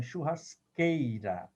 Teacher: Você não fala churrasqueira. Você não escuta o som do U. Então, é churrasqueira. É como se QU fosse o fonema K.